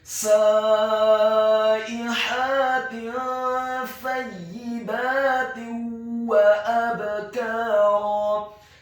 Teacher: Huruf ya-nya dibaca tipis ditasydidkan ditekankan kasrah 1 harokat.